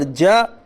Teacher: جیم کے اوپر زبر ہے، زبر کو جلدی پڑھیے، تھوڑا بھی نہ کھینچیے، زبر کی آواز اوپر کو اٹھتی ہے۔